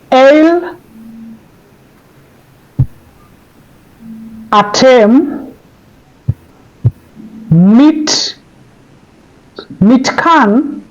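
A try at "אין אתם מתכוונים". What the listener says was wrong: You need to pronounce your vowels. Mitkav.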